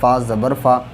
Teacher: دیکھیے، فا کے اوپر زبر ہے، زبر کو جلدی ادا کریں، تھوڑا بھی نہ کھینچیں